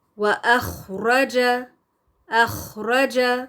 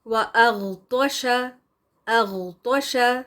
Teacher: خا ساکن، اس کے ساتھ اس کو پروناؤنس کرتے وقت خراش کی سی آواز آنی چاہیے، اور ہوا بھی جاری رکھیں گے ہم، لیکن غین کو پڑھتے ہوئے ہوا کو روکنا ہے اور صرف آواز کو جاری رکھیں گے